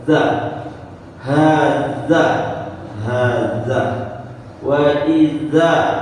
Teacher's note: di antara apa namanya lidah dengan langit-langit atas ya atau mudahnya lidah kita dijepit dengan dua gigi atas dan bawah